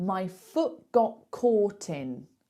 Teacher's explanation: British people just drop T's · What you're going to hear instead is a glottal stop. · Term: drop the T